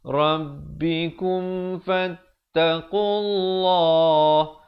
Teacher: Lafzul jalalah datang sebelumnya baris dhammah, dibaca tebal dua harakat.